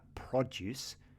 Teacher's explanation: The pronunciation, you put the stress on the second part.